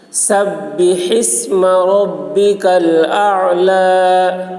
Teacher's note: با میں تشدید ہے، سین کو با کے ساتھ ملائیں گے، سختی کے ساتھ ملائیں گے. سبح اسم، ہا حلق سے ادا کریں گے.